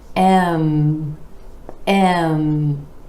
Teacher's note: bringing the lips together for the M consonant with air flowing out through the nose